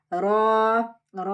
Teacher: ரா heavy letter நல்லா ஹெவியா சொல்லணும் லிப்ஸ் ரவுண்ட் பண்ணக்கூடாது